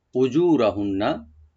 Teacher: জিমটাকে আমরা এক আলিফ টানবো, র একটু ডিপ হবে